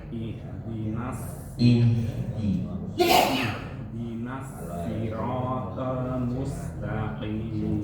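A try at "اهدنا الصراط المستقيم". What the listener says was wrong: Soknya sedikit Pak. Soknya dibalikin. dari nyengir dibalikin ke depan.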